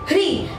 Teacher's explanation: देखिए ये होता है दोस्तों री, ये सिंपल री होता है, ये होता है री, मतलब कि इसमें थोड़ा ह का भी उच्चारण होता है, री